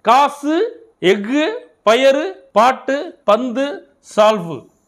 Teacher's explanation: சொல்லின் இறுதியில் வரும்பொழுது ஒரு மாத்திரைக்கு பதிலாக அரை மாத்திரை அளவே ஒலிக்கும் இவ்வாறு தனக்குரிய ஓசையில் குறைந்து ஒலிக்கும் உகரம் குற்றியல் உகரம் ஆகும் · சொல்லின் இறுதியில் வரும்பொழுது ஒரு மாத்திரைக்கு பதிலாக அரை மாத்திரை அளவே ஒலிக்கிறது. குசுடு துபுரு ஆகிய 6 வல்லின உகரங்களும் சொல்லின் இறுதியில் வரும்பொழுது ஒரு மாத்திரைக்கு பதிலாக அரை மாத்திரை அளவே ஒலிக்கும்.